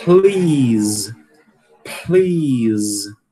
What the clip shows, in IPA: pli:z